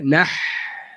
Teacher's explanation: Ha daripada tengah leher.